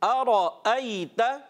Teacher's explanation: हमज़ा की आवाज़ आनी चाहिए, आइन की आवाज़ नहीं आए।